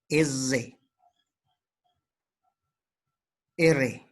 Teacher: de la cavidad de la boca por ejemplo l el vibrante el aire ingresa y realiza una pequeña vibración de la punta de la lengua al pasar